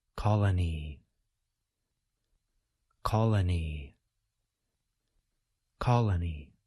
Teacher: we can now say the whole word a little bit faster be sure that you place stress on the first part of the word